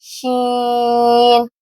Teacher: زبان کا درمیان تالو کے درمیان سے جب ٹچ ہوگا تو زبان تھوڑی سی پھیل جائے گی، زبان تھوڑی سی پھیل جائے گی تو شین ادا ہوگا۔